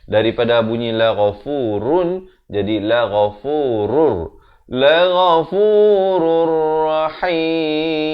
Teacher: Masuk tanpa dengung di sini. Daripada bunyi la ghafurun jadi la ghafurur. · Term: Idgham bila ghunnah